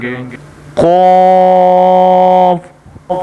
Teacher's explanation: یہ قاف جس کے اوپر 2 نقطے ہیں یہ موٹی قاف ہے اور اس کو ہم اسی طرح گول منہ کر موٹا ادا کریں گے